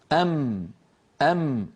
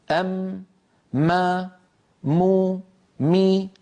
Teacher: تصادم الشفتين ومرور الغنة من الخيشوم، مجموع ذلك يشكل لنا حرف الميم